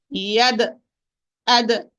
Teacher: I close the articulation point and then I open it with a degree of force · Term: qalqala